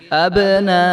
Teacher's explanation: لمبا کریں گے، یہ پہلے بھی ہم بتا چکے ہیں، تو آگے جو حمزہ ہے اس کو لمبا نہیں ہونے دینا اور اس کو واضح کر کے پڑھیں گے